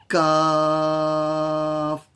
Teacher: قاف کے مخرج سے ذرا باہر کی طرف سے کاف ادا ہوتا ہے